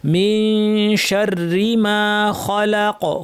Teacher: শাররি শব্দের রটা, এই রটায় তাসদীদের সাথে জের থাকায় পুরোটাই পাতলা হবে। অনেকে ভুলে শাররি বলেন, শাররি না, শাররি পুরোটাই পাতলা।